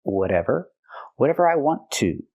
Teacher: We hear the T in whatever pronounced as a fast D because it's between vowels.